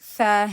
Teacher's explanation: حرف ث کی ادائیگی کے لیے زبان کا سرا سامنے والے اوپر نیچے کے جو دو دانت ہیں ان کے بیچ میں آتی ہے